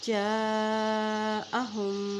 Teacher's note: अलिफ मद को हम लंबा करेंगे क्योंकि इसके ऊपर मद है।